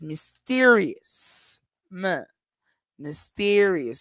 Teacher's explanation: and we have two schwas